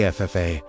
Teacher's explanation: the emphasis falling on the final syllable, you feel something move in your skull.